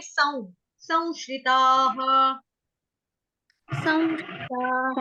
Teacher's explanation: किसी ने सम बोला, सम नहीं बोलेंगे, सं